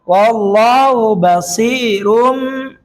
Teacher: mengubah suara menjadi mim atau disebut dengan iklab. Nun sukun atau tanwin dibaca iklab jika bertemu dengan salah satu huruf.